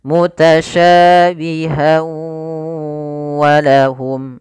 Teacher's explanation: Idgham disertai dengan gunnah, maka masukkan tanwin pada huruf ha, masuk kepada huruf waw dan ditahan suara wawnya. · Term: idgham bi gunnah